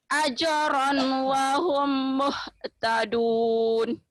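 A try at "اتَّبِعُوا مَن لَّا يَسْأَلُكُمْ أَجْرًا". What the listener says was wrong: Ittabi'u man la yas'alukum. A-nya tadi kurang mantap. Ittabi'u man la yas'alukum ajra wa hum muhtadun.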